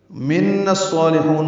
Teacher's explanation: نون کو الصالحون کے صاد سے ملانا ہے، ادغام شمسی ہوگا، الف لام نہیں پڑھا جائے گا